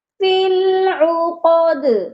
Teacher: عقد پر عین جو ہے اس کی آواز حلق سے آئے گی، درمیان والے حلق سے، فی العقد، اور دال پر قلقلہ بھی ہوگا۔